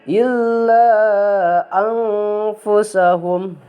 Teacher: nun mati bertemu dengan fa, karena si fa ini huruf ikhfa, maka si nunnya itu didengungkan ya